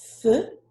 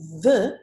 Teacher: The TH can have at least 2 sounds. Th, which is called voiceless, and the, which is called voiced. So listen to the difference.